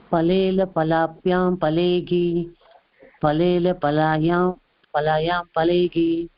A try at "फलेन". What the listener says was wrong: பலேன இல்ல கவனிங்கோ இன்னொரு தடவை பலேன லா கிடையாது பலேல இல்ல பலேன அப்புறம் பலாபியாம் இப்ப இருக்கு நடுவுல பலாபியாம்